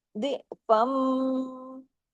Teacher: मीम पे तशदीद है गुना भी होगा